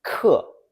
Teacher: This has a falling fourth tone.